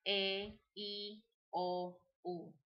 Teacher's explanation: all the vowels in Spanish sound flat. They don't have the long sounding sound as they do in English, such as A, E, I, O, U.